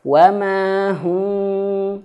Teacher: Maka cara bacanya adalah dua bibir didekatkan, dirapatkan, tapi masih sedikit ada celah. Seukuran kertas, seukuran selembar kertas. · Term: infiraj